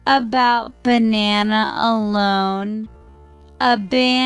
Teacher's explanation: dropped and the lips are in a neutral position tongue position the tongue is in a neutral Central position neither too high nor too low in the mouth and it's relaxed · the mouth is relaxed with the jaw slightly dropped and the lips are in a neutral position tongue position the tongue is in a neutral Central position neither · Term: schwas sound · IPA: /ə/